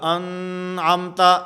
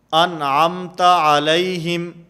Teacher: جیسے سورۃ الفاتحہ کے اندر ہے صراط الذین انعمت، انعم نون ساکن، اور نون ساکن کے بعد حروف حلقی میں سے عین موجود ہے، اس لیے یہاں پر غنہ نہیں ہوگا، انعمت ایسے نہیں ہوگا، نون کو بالکل ظاہر کر کے پڑھیں گے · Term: اظہار